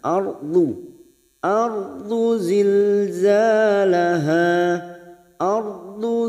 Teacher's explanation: pinggir lidah kita nempel pada gigi geraham atas bisa kiri bisa kanan